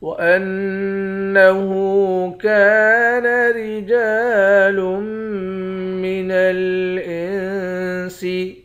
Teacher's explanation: ہا کے اوپر الٹا پیش ہے، ایک الف کے مقدار کھینچ کر پڑھتے ہیں۔ · حمزے کو نون مشدد کے ساتھ ملا کر نون پر غنہ کریں گے